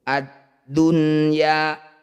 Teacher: bacaan izhar wajib ya izhar itu jelas wajib itu harus bunyi nun sukun harus dibaca jelas dan jangan mendengung